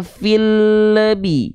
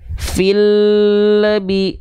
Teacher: Bunyi lam sukun di sini itu dia terpantau memantul kalau di ujung pelafalan L-nya ada bunyi vokal hidup lagi, yaitu bunyi vokal e. Kalau di Sunda eu tuh e dibacanya.